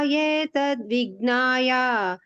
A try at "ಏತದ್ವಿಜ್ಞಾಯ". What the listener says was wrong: ಅಲ್ಲಿ ನೀವು 3ನೇ ಲೈನ್ ಏತದ್ವಿಜ್ಞಾಯ, ಅದು ಸಪ್ರೇಟ್ ಹೇಳ್ಬೇಡಿ. ಏತದ್ವಿಜ್ಞಾಯ ಏತದ್ವಿಜ್ಞಾಯ ದಕ್ಕೆ ಬತ್ ವಿ ಇದೆಯಲ್ಲ ಮುಂದೆ ದಕ್ಕೆ ಬತ್ ಬಂದ ಹಾಗೆ ಹೇಳ್ಬೇಕು.